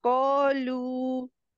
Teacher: कॉफ को और हेवी करेंगे और जबान की जड़ को तालू के सिर्फ नर्म हिस्से से लगाएंगी